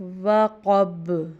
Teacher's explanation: اس میں قوف دو نقطوں والا ہے، یعنی یہ حلق سے نکالنے والا اور موٹا پڑا جاتا ہے، اور با چونکہ حروف قلقلہ میں سے، تو جب ساکن کریں گے وقف میں تو اس کو قلقلہ کریں گے، وقب ہلائیں گے، یعنی جس مخرج سے نکل رہا ہے یہ با ادا ہو رہا ہے اسی سے آواز دوبارہ جا کے ٹکرائے گیند کی طرح